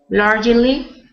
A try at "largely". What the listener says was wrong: So instead of largely, it's just 2 syllables. So you just say largely.